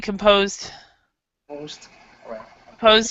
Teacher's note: the composed actually sounds kind of like a t sound so the E is not pronounced and the d uh sounds like a t but it be